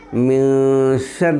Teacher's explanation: شین ہے، اس لیے نون کا اخفاء حقیقی ہوگا